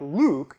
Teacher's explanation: If we look at a word like Luke and focus in on the first sound, we can see that the first two formants are pretty distinct, around 300 Hz and 1600 Hz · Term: lateral approximants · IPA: [l]